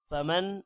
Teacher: فمن نون پر غنہ ہوگا